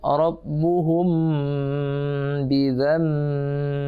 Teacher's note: mim mati ketemu ba, itu ikhfa syafawi, samar-samar berdengung di bibir